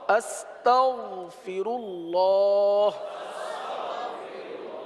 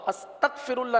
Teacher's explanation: गन तो उस वक्त अदा होगा जब उसको अपने मखरज से अदा करेंगे और पुर अदा करेंगे। गैन को अपने मखरज से अदा करेंगे और पुर अदा करेंगे